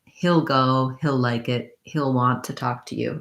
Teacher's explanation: In fast, fluent speech, for fluent connected speech, heel changes to more of a hill, which sounds like the word hill, he'll go. So in that case, I have the lax is sound.